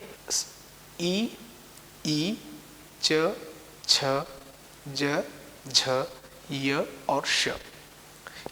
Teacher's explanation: इन ध्वनियों का जब हम उच्चारण करते हैं तो तालू को स्पर्श करते हैं